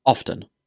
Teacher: I pronounce this word with the T sound, often, but both are acceptable.